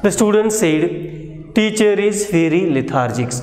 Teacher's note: So this longer sentence is divided into two component, two group. First group is the student said. The second one is teacher is very lethargic. So the same sentence, when its tone group is changed, it will have a different meaning.